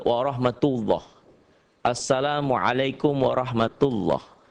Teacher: mengucapkan huruf lam dengan tebal sampai memenuhi mulut ketika mengucapkannya